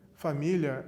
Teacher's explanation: Família é uma paroxítona. A sílaba tônica é o mi, uma paroxítona terminada em ditongo.